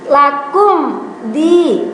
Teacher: Jadi tidak boleh lakum, me-nya tidak boleh karena mim sukun, depannya ada dal, itu dinamakan idhar syafawi atau harus dibaca terang atau jelas